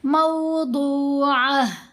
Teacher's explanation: مو نہیں پڑھنا، مو نہیں پڑھنا، مو. دوسری ضاد کی آواز اوپر پیش ہی پڑھی جائے گی لیکن لمبی ہو جائے گی